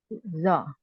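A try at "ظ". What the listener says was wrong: Za, bukan zo.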